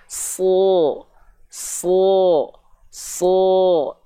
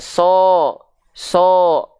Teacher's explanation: pangkal lidah naik, bibirnya nggak perlu pakai monyong-monyong.